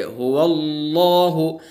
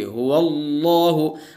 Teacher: अल्लाह के लाम से पहले ज़बर होगा तो अल्लाह का लाम पुर पढ़ा जाएगा, जैसे हुवल्लाहु। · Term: लाम को पुर